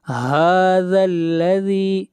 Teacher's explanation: من هذا الذی من نون کو ظاہر کر کے پڑھیں گے، نون کے اوپر اظہار ہوگا اس لیے کہ نون ساکن کے بعد اگلا حرف ہا ہے اور ہا حروف حلقی میں سے آتا ہے، اس لیے یہاں پر اظہار ہوگا. هذا الذی ہا کو کھینچ کر پڑھیں گے ایک الف کے برابر، ہا کے اوپر کھڑی زبر ہے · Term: مد اصلی